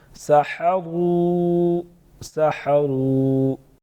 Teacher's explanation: واو مدہ ایک الف کے برابر، ساتھ میں چھوٹا مد 2 سے 3 الف کے برابر کھینچ سکتے ہیں